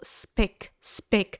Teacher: It's not speak like a long tense vowel. It's laxed vowel. It's short vowel